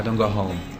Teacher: I think we don't pronounce the T sound at the end